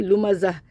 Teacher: زا میں زبان سیٹی کے ساتھ پڑھنا ہے، اس کو منہ کے اندر رکھ کے پڑھنا ہے